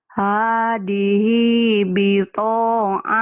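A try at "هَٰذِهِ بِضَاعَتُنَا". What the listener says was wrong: Kok bito sih? Bidok. Bidok. Hadhihi bukan hadihi. Hadhihi.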